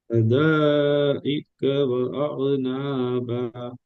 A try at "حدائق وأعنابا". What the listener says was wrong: இதுலயும் அதே பிரச்சனை. ஸ்டார்டிங் எழுத்துல நீங்க அவசரமா கடந்து வந்தீங்க. ஹத ஹத ஹத அல்ல, ஹதா இல்ல ஹத. ஹேவ உங்களுக்கு நாங்க அந்த எழுத்தை படிக்கல தானே, உங்களுக்கு எப்படி அந்த எழுத்தை உச்சரிக்க தெரியுமோ அந்த அமைப்புல வெளிப்படுத்தி ஒதுங்க, அவசரம் இல்லாம. ஹத ஹத. நீங்க ஒரு செகண்ட் தான் நிட்டீங்க, 3 செகண்ட் நிட்டு டைம்.